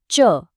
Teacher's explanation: च वर्ग के लिए हमारी जीभ ऊपर तालू को छूती है